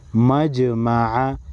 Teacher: تو جیم کو ہلا کر پڑھیں گے۔ مجمع، مجمع اس طرح نہیں پڑھیں گے، مجمع۔